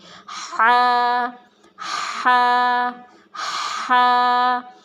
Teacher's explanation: ہا کو ہم اپنے حلق سے گلے کے شروع والے حصے سے نکالیں گے